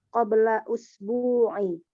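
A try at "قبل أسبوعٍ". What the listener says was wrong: Aywa, qabla usbu'in ya, di sini ada tanwin ya. Qabla usbu'in.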